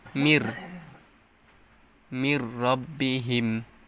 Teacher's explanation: মির, এটাকে বলা হয় ঈদগামে ব্লা গুন্না। নুন সাকিনের পরে ঈদগামে ব্লা গুন্নাহর হরফ র আসছে, তাই এখানে গুন্না ছাড়া মিলিয়ে পড়তে হবে।